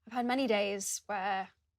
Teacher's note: uses the long vowel /ɛː/ for the word 'where'